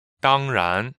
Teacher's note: 当 is first tone, 然 is second tone